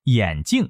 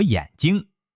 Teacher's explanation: 眼镜，镜是第4声，眼睛，睛是第1声